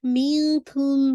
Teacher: make sure یہاں پہ آپ نے اخفا کرنا ہے, لائٹ کرنا ہے, کیونکہ کاف لائٹ لیٹر ہے